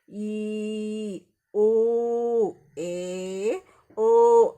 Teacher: ಈ ಸ್ವರಗಳನ್ನ ನಾವು ಉಚ್ಚಾರಣೆ ಮಾಡುವಾಗ ನಮ್ಮ ಉಸಿರನ್ನ ಉದ್ದಕ್ಕೆ ಎಳಿತೀವಿ ಆದ್ದರಿಂದ ದೀರ್ಘ ಸ್ವರಗಳು ಅಂತ ಹೇಳ್ತಿವಿ